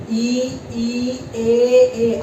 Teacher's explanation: अगर आप बोलोगे ई, ए, आपको पता चलेगा आगे जीभ के आगे वाले हिस्से से ये बोले जाते हैं, इसलिए इनको बोलते हैं अग्र स्वर